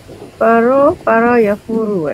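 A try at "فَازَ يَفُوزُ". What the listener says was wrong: Faza Ibu, Faza bukan Faro.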